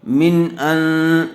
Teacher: نون ساکن کے بعد حروف حلقی میں سے حمزہ آیا ہوا ہے، اس لیے بغیر غننے کے جلد اظہار کر کے پڑھیں گے